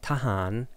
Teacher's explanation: tahan has the fourth and the fifth tone respectively